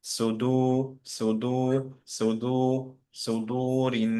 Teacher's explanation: সো এটা সদ heavy, সু, তারপরে মুখটা রাউন্ড করে ফেলবো, দু হয়ে যাবে